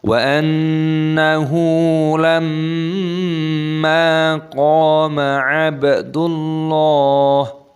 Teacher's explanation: nun tasdid dibaca gunnah berdengung dan nunnya dibaca pendek. Wa annahu lamma, mim tasdid dibaca gunnah berdengung dan mimnya dibaca panjang, ada tanda alifnya matobi'i.